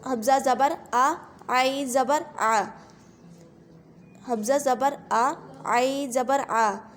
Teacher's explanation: عین کی آواز جو ہے وہ حلق سے نکلے گی ، عین زبر آ، واضح نکلوائے گی اس کی آواز، حمزہ